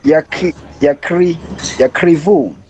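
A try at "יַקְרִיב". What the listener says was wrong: There's no U at the end, just Yakriv.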